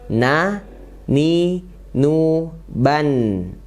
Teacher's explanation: makronya yaitu ujung lidah menempel ke gusi atas ya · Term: huruf na